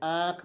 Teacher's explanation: अनुनासिक में क्या होता है कि हवा मुख और नाक दोनों से निकलती है